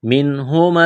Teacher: نون ساکن کے بعد ہا ہے، حروف حلقی ہے، اظہار کریں گے، بغیر غننے کے پڑھنا ہے · ہے، اظہار کریں گے، بغیر غننے کے پڑھنا ہے، منہما السدس، سین میں سیٹی کی آواز پیدا کریں گے ، میم، میم مشدد ہے، آواز ناک میں چھپائیں گے، غنہ